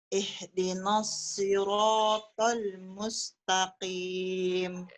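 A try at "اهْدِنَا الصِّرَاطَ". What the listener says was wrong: Sekedar catatan, lagi-lagi ngambil shotnya jangan terlalu dini. Sehingga na-nya jadi tebal ikutan. Ihdinas, na-nya jadi na. Padahal harusnya na, tipis kan. Ihdinas, ya. Nas. Ya, ini kalau Anda lambatkan.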